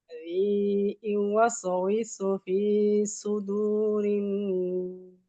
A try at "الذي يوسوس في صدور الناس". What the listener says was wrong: সদটা আরেকটু মোটা, ফি সু, মুখটা ভরপুর করে, মনে হবে যে সদ বলতেছেন। সদ বললে মুখটা ভরপুর, একটা ভারী ভারী ভাব নিয়ে আসতে হবে। ফি সুদুরিন নাস, এইভাবে।